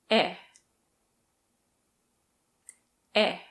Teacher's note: your tongue is relatively high in the mouth but not at the top and the tip of your tongue is at the front it is also unrounded which means your lips are spread out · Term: closed mid front unrounded vowel, close mid-front unrounded vowel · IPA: /e/